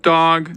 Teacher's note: Trying to say this with like a level F0. Dog. It's not creaky, but this is the first consonant.